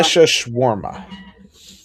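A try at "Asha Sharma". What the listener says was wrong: No, just Sharma, not Shawarma. Sharma. Charmin, but without the in.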